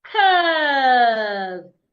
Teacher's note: The U and R there should be articulated as a long sound.